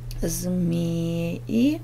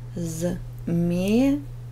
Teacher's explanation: Ударение ставим змеи на первый слог. Змея на второй слог.